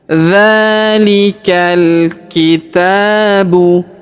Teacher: Huruf ta kita panjangkan 2 harokat karena terdapat alif kecil di atasnya ya.